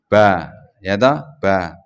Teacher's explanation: ba berarti 2 bibir yang mengatup terus dibuka.